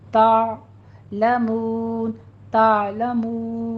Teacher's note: आइन वस्ते हलक में जाके स्टॉप हो जाएगा